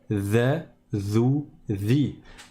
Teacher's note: c'est le bout de la langue qui touche le bout des dents, du haut. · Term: dhal